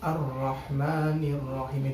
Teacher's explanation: lebih detail ar-rahman Rohim merupakan suatu hukum bacaan yaitu Idgham Syamsiah Alif lamnya itu tidak dibaca langsung masuk ke huruf setelah Alif lamnya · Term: idgham syamsiyah